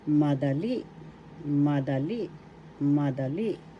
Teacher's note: in english first syllable ma second syllable the third syllable le the accent is in the third syllable